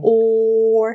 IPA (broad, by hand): ɔːr